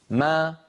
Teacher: فلما يقول الواحد منا أم، يخرج الميم الساكنة بالتصادم بين الشفتين، لكنه لما يقول ميما متحركة ما، فإنه يخرجها بتباعد الشفتين والفكين. ما، فبتباعد الشفتين خرجت الميم، وبتباعد الفكين خرجت فتحتها